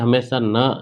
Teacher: जैसे ही आप न बोलोगे, तो न में हमेशा न, नाक से हवा निकलेगी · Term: अनुनासिक